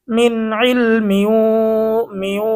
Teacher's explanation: ঈদগামে বাগুন্না নুন সাকিন ও তানভিনের পরে ঈদগামে বাগুন্নার 4 হরফের কোনো একটি হরফ আসিলে তখন ওই নুন সাকিন বা তানভিনকে গুন্নাহের সহিত মিলিয়ে পড়িতে হয়। এখানে কিন্তু তানভিনের পরে ঈদগামে বাগুন্নার হরফ ওয়াও এসেছে, এই জন্য আমরা কি করব, গুন্না সহ মিলিয়ে পড়ব।